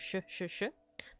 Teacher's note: This is like a sh, just like in English, Hebrew, and Arabic, a voiceless palato-alveolar fricative